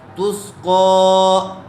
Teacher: فیہا عین جاریہ، تا سین پیش تس، قو، قوف کھڑا زبر قو، قوف کو پر کیجئے، قوف کے اوپر کھڑا زبر ہے، اور کھڑا زبر برابر ہوتا ہے الف مدہ کے، اس لیے اس کو تھوڑا کھینچ کر پڑھیں گے۔